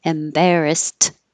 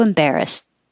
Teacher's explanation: the Ed in this word sounds like a t embarrassed but we don't release the T so you won't hear it unless there's a vowel after it